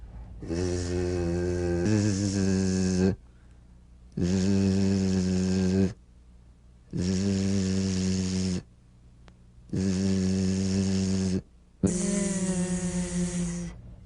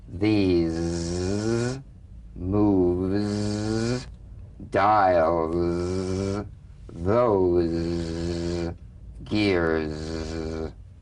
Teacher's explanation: It's in that little space that the Z sound is formed. So feel a smooth, strong vibration in the teeth and in the front of the tongue.